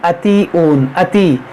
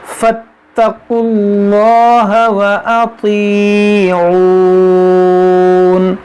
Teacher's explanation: یہ عین کو حمزہ پڑھتے ہیں